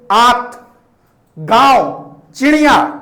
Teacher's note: अनुनासिक के उच्चारण में नाक से बहुत कम सांस निकलती है।